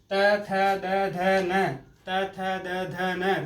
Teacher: दांत के जीवा स्पर्श कर ली इसलिए ये दंत वर्ण है